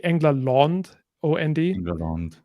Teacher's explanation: there was something in sort of halfway between an O and an A when you have a nasal following